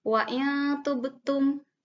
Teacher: ketika nun mati bertemu dengan huruf ta, ya, maka harus didengungkan nunnya. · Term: ikhfa